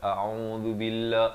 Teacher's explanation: a dengan ain, bezakan, a di pangkal kerongkong, ain di pertengahan kerongkong, hamzah dan ain